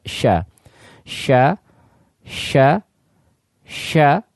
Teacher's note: lidahnya itu menempel sehingga maksudnya tertutup akan tapi huruf syin ya Tengah lidah ketika dia naik ya mengarah kepada langit-langit mulut maka dia tidak menempel ya Sehingga Ya maksudnya tidak tertutup atau artinya Dia terbuka hal